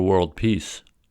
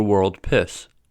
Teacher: the main distinction between e and I is tenseness e is a tense vowel to produce this tense e sound slightly draw the lips back